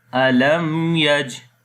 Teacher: on the jim we make kalkala sound due to sukun sign is coming on the jim, and that is kalkala letters. · we make izhar shafawi, we make the clear sound of meme